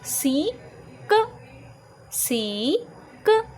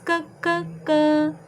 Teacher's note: सी का जो साउंड होता है वो क और ख के मिड का साउंड होता है। जब आप इसको प्रोनाउंस करते हैं ना तो हम डायरेक्टली कैट नहीं बोलते, इसे कैट।